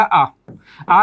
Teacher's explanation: आ का उच्चारण करते हैं तो मुख बंद नहीं होता है और मुख सबसे अधिक खुलता है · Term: विवृत स्वर